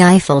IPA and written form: ˈaɪfəl (Eiffel)